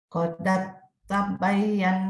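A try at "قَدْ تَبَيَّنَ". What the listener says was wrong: Lihat, jadi jangan koda. Kan huruf dalnya kosong. Qad tabayyana. Dalnya ini dianggap tidak ada.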